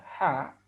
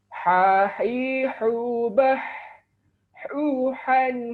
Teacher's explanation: huruf Ha makhrajnya keluar dari tengah-tengah tenggorokan kita